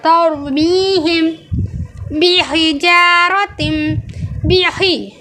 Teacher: اب یہ ہا حلق سے نکالا جا رہا ہے سانس کے ساتھ۔